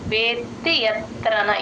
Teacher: చైవాయం వేత్తి వేత్తి అనేయకూడదు వేత్తి త కింద త వత్తు ఉంది కాబట్టి వే కి త ని జాయిన్ చేసి చెప్తేనే ఆ త కింద త వత్తు క్లియర్ గా వినిపిస్తుంది